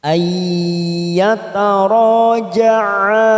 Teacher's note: nun sukun bertemu ya idgham bi gunnah, kita tekan 3 ketuk